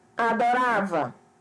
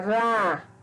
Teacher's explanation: A sílaba tônica é a penúltima